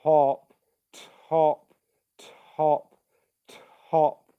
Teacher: you're just pushing out some air and then you're turning on the voicing